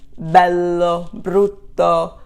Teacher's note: the accent falls on the second to the last syllable which is the rule for italian pronunciation